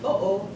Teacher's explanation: there was a distinct separation between the 2 O's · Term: glottal stop